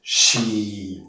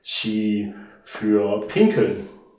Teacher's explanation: Tiefer Ton, langes I, aufgepasst.